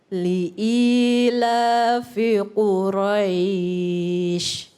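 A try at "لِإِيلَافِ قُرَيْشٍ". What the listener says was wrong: Masya Allah.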